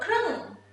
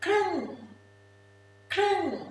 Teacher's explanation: K and R is a cluster. R sound should be in there. And is short and your lip gonna be straight like this.